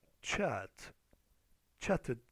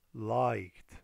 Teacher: When a verb ends in t or d, إذا انتهى الفعل ب t or d, we pronounce the extra syllable as id.